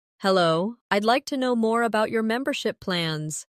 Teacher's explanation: Notice the stress on membership, so it's clear what you're asking about.